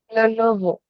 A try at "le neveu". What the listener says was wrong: Neveu. Nouveau, non. Le neveu. N-E is neveu.